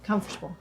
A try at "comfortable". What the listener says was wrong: No, you're still saying you're adding that extra syllable, comfortable, which is fine again. But people just say comfortable. Comfortable.